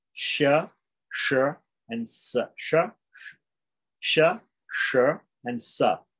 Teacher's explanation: the three S's, the sibilants, right? Which are palatal, cerebral, and dental